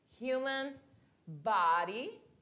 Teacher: Então, o human, que eu falo assim com esse som, com esse H, eu falo com esse H como se tivesse som de R